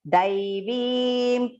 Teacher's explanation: It is not Devim. It should not be pronounced Devim. It is Dai, long pronunciation, and Veem.